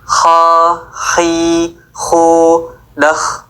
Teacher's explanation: Kho diucapkan dari ujung tenggorokan. Saat mengucapkan kho ada nafas yang mengalir nih hams. Tempat keluar hurufnya itu bagian terdekat dari tenggorokan ke mulut. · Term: huruf kho